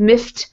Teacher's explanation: miffed ends in a T sound because this F here is not a voiced sound. You don't use your voice to make F happen.